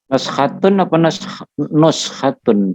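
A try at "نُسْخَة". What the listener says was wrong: Naskho apa nuskho? Nuskho ya, bukan naskho ya. Coba lihat di kamus. Nuskhoh, nuskhoh. Ya, nuskhoh bacaannya ya.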